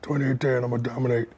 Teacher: with Shaq, it's breathy and bassy